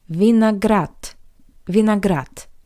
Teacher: the voiced consonant d at the end of this word also sounds like the paired voiceless consonant t